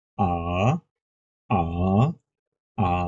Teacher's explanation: প্রথমটা দ্রুত বলে পরটা সেকেন্ড টোন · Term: থার্ড টোন